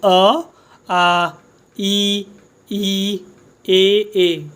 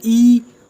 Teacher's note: होंठ मतलब हमारे आयत की तरह हो रहे हैं, खींच रहे हैं, खींच, गोल नहीं हो रहे, खींच रहे हैं हमारे होंठ।